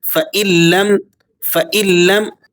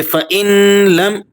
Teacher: یہاں نون لام میں چھپے گا لیکن بغیر غنے کے